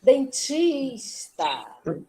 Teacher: Porque a sílaba tônica é a penúltima.